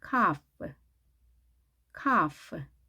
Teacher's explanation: L 발음이 되지 않습니다.